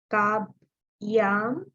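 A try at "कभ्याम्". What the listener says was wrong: Kabhyam, bha, mahaprana. Kabhyam. Kabhyam.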